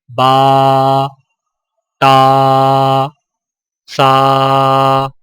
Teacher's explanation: الف مدہ ہونٹوں کو اوپر کی طرف کھول کر تھوڑا سا کھینچ کر پڑھا جاتا ہے، اور اس کی آواز کا رخ اوپر کی طرف ہوتا ہے، جیسے با، تا، سا۔